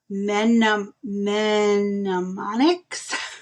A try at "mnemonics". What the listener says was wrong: Oh, mnemonics. You don't pronounce the M. Mnemonics.